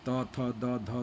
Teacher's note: थ जो होता है ना, वो जीभ जा करके दांत के पास टच करता है, तो दांत से उच्चारण होता है इसका, तब बाहर आवाज़ आती है थ की।